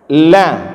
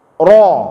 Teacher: Lam dan ra itu adalah dua huruf yang sama-sama keluar dari ujung lidah, bertemu dengan langit-langit.